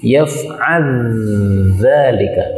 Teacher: Ini lam ketemu dzal, boleh idgham menjadi yaf'al dzalika, ya, lamnya hilang.